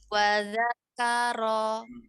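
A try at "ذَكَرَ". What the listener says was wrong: Bukan ro, ini bibirnya itu pasti maju nih. Ro, suaranya diangkat, bukan suaranya dikeluarkan. Ro tidak, tapi ro diangkat dulu, ya.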